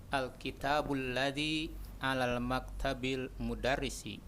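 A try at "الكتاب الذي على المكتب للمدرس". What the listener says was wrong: Alal maktabil hakadha. La, khata. Alal maktabi lil mudarrisi. Itu bukan alif lam Syekh, itu lam double dua-duanya. Alifnya dihapus karena ada lam. Lil. Tidak mungkin alal maktabil mudarrisi, tidak mungkin. Nah, nanti jadi na'at wa man'ut. Guru tidak mungkin jadi na'at.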